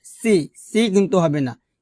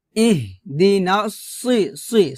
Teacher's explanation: সদ মোটা করে বলতে হবে, সিনের মতো উচ্চারণ করা যাবে না